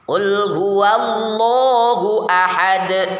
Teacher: dalam keadaan sukun hendaknya dipantulkan qalqalah. Dal juga punya sifat qalqalah, maka dipantulkan gitu ya.